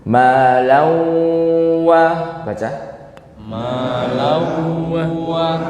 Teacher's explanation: Hukumnya idgham bi gunnah. Yani nunnya menjadi tasydid di huruf wawu ditambahin dengung.